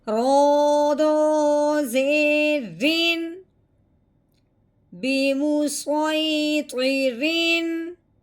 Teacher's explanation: اب ہم نے تنوین پہ غنہ نہیں کرنا, بغیر غنے کے اظہار کے ساتھ پڑھنا ہے